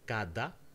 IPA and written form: kada (cada)